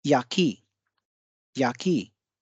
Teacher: या पे बल कम होगा, की पे बल अधिक होगा।